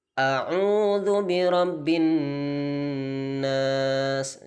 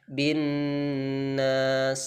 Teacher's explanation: Jadi bin nas ditahan 2 harokat. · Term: nun tasydid